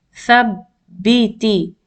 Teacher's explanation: Thabbiti. Ba is being pronounced twice. So it has a shadda.